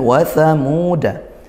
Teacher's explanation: ini dibaca panjang ya, karena dhammah diikuti wawu sukun, 1 di antara 3 huruf mad, alif, wawu, ya.